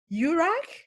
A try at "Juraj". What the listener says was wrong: Almost there. The first J was correct, but it's Yurai, so both J's are soft.